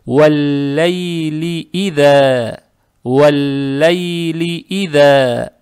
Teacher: Касру ни в коем случае не надо тянуть, лам читается мягко. Как только касру произнесли, сразу сюда переходим.